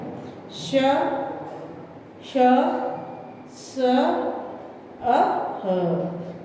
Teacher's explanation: बाकी जो श है, इसमें ऐसा लग रहा है कि भाई सीटी बज रही है · उच्चारण में वायु जीभ से घर्षित होती हुई हल्की सी सीटी की आवाज का अभ्यास कराती हुई बाहर निकलती है, उसे ऊष्म व्यंजन कहते हैं।